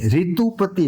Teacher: આ રૂનો ઉચ્ચાર હિન્દી વાળા તે રી કરે છે.